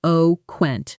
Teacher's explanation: The stress falls on the first syllable, eloquent.